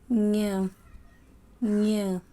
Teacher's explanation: ಮೂಗಿನ ಸಹಾಯದಿಂದ ಉಚ್ಚರಿಸುವ ಅಕ್ಷರಗಳಿಗೆ ಅನುನಾಸಿಕ ಅಕ್ಷರ ಎನ್ನುತ್ತಾರೆ